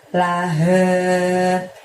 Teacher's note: La-nya biasa aja, lalu he-nya sama seperti ayat 1-4 tadi. H-nya kita keluarkan dari tenggorokan bagian bawah, lebih tebal daripada saat ngucapin ha sebelumnya tadi